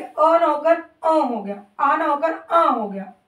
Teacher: हैं लेकिन ये है क्या अनुनासिक जब स्वरों को मुख के मुख से उच्चारित करने के साथ-साथ हल्का सा नाक से भी उच्चारित किया जाता है